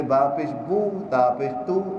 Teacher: یہ پیش کے لیے ہونٹ گول ہوتے ہیں. پیش حرف ادا کرتے ہونٹ گول کیجئے.